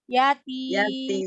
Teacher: mimnya jangan langsung diputus. Alirkan sedikit suaranya.